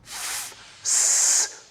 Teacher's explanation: when we restrict the flow of air, as in f, s, producing a chaotic, noisy sound